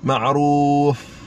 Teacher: Dalam yang basah, luar yang kering. Ni gigi kita ni sentuh bibir bawah, bibir yang sebelah dalam yang basah.